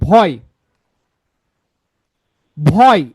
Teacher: এই অয়টা আসে হচ্ছে অ এবং এ মিলে অয় হয় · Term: যৌগিক স্বরধ্বনি